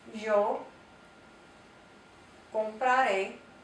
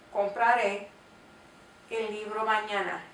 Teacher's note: The emphasis is placed on the end. So the accent falls on the very last syllable of these words.